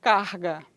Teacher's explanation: pronúncia típica do dialeto carioca ocorre fricção audível na região velar · é um som que é fricativo velar